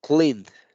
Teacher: De la N me brinco a la D. La E no la estoy pronunciando.